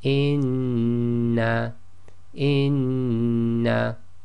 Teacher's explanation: you hold the sound in your nose and you don't move your tongue · you have to hum it, i.e. hold the sound in your nose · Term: ghunna